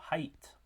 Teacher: So at the beginning it's an ah vowel, at the end it's a yi vowel, so height. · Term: diphthongs